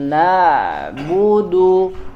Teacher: huruf ain mengalir ya, dia keluar dari tengah tenggorokan ya, dan dialirkan suaranya di makhraj ketika membacanya, terutama ketika sukun ya.